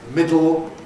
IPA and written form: ˈmɪdl̩ (middle)